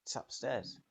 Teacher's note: In it's upstairs, it's can be shortened to a tss sound.